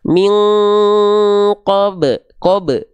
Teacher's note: enggak usah dipanjangkan karena dia dipantulkan bukan dipanjangkan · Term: qolqolah